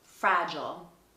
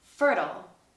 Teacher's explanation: Something else you'll notice in the American accent is when the words end with I-L-E. In British English, we say I'll, but in American English, these tend to be ul.